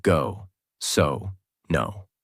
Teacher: your lips become round and forward